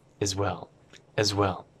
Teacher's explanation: And as well kind of becomes one word.